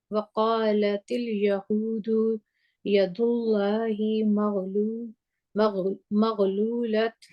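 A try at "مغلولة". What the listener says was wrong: نہ، جب رکیں گے تو کیسے رکیں گے؟ یہ والا تا جو ہے جب اگر ہم اس پہ رک جاتے ہیں تو یہ ہا بن جاتا ہے، مغلولہ۔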